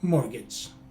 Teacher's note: the letter a is pronounced as a short letter i as opposed to a long a as spelled